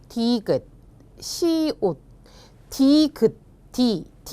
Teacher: 혀끝이 윗니의 잇몸에 닿으면서 라고 했습니다. 잇몸에 닿으면서 나는 소리, 잇몸 소리라고 했는데요